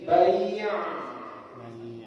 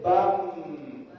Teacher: Kalau B kan tertahan sedangkan dia harus mengalir sedikit